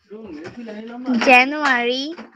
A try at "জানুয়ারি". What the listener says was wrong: না, রি না, রিটা উচ্চারণ সুন্দর করেছো এর আগের বার, এবার ভুল হচ্ছে, জানুয়ারি, রি, আবার বলো।